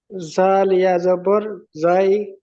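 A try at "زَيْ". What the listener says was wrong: জাল নয়, ওটা জ আছে, দেখেন জ।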